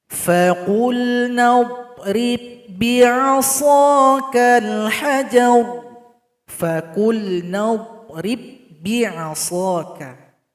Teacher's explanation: Faqul nadrib bi, itu salah. Jadi ba ini tidak dibaca lagi karena telah gabung kepada huruf berikutnya.